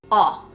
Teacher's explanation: the British version you got to round up your lips a little bit to get the sound right